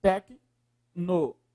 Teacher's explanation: Qual é a sílaba mais forte? Aí é o LO, professor. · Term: proparoxítona